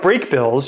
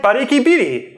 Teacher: you’d change the second vowel, break up the [bɹ] and [kb] bunches, chuck the consonant at the end